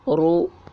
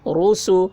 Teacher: اجرا جیسے رسول، را کے اوپر پیش ہے، پیش کو جلدی پڑھیں، تھوڑا بھی نہ کھینچیں، معروف پڑھیں اور مجہول آواز سے بچیں